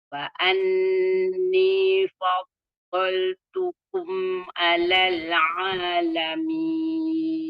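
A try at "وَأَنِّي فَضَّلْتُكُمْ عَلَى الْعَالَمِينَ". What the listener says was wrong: Alal. Lagi sedikit. Sebab alamin boleh sebut dengan sempurna. Alal alamin. Ain tadi. Alamin tadi dapat sebut dengan baik. Cuma alal itu dia sedikit kurang. Ada dah sifat ain dan sifat apa semua tu dapat sebut dengan baik tapi kurang sempurna, tidak selaras dengan kesempurnaan pada perkataan al-alamin.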